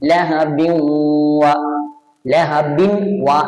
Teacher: എന്ന സ്ഥലത്ത് നമ്മൾ എങ്ങനെ പാരായണം ചെയ്തു ലഹബിൻ അപ്പൊ അവിടെ എന്തൊക്കെ സംഭവിച്ചു ഒന്നൊന്നിലേക്ക് ലയിപ്പിക്കുകയും ചെയ്തു അതോടൊപ്പം മണിക്കുകയും ചെയ്തു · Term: ഇദ്ഹാം ബിന്നുന്നയും